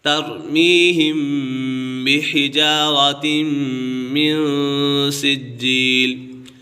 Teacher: ترمیہم یہاں پر میم ساکن کے بعد یہاں پر اخفاء شفوی لگ رہا ہے کیونکہ میم ساکن کے بعد حرف با آ گیا ہے، میم ساکن کے بعد حرف با آ جائے تو میم ساکن میں اخفاء شفوی ہوگا یعنی غنہ کر کے پڑھیں گے